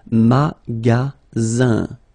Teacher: you've got only one S between two vowels. Then you get the sound Z, alright? And then the ending here is IN, so it's nasal, it goes in your nose, and it's un.